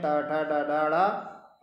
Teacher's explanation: टा वर्ग मूर्धा से होता है तो टा वर्ग के जो व्यंजन है वो सब मूर्धन्य कहलाते हैं